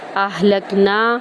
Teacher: نون کو ایک الف کے برابر لمبا کریں گے